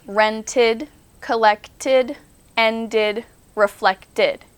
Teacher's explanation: These are the ID sound. These are also the new syllable sounds.